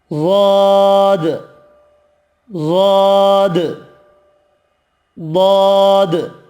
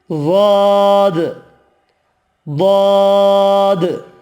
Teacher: زبان کی نوک آگے نہیں لگ رہی، خالی حافہ لسان کا استعمال ہو رہا ہے ضاد کے لیے۔ ضاد، ضاد۔ آگے حروف طرفیہ یا طرفیہ، اس سے لام، نون اور را، یہ 3 حروف طرفیہ کہلاتے ہیں۔